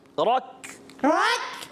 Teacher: रा पुर करें, का बारीक हो जाएगा।